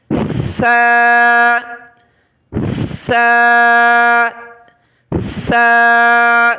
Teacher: دانتوں سے زبان کی نوک باہر نکالیں گے اور سیٹی کی آواز نہیں آنی چاہیے